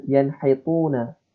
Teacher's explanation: Yanhituna ini ketika nun sukun bertemu dengan ha. Nah, huruf ha yang keluar dari tenggorokan dibaca dengan jelas gitu ya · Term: izhar